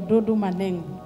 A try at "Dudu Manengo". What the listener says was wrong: Sio Dodo, ni Dudu Manengo.